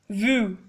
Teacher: Now, the sound of U does not exist in English language, but you can try saying it with rounded lips and the sound will be U, as in vu. OI is always pronounced like a wa when placed together, hua, meaning king.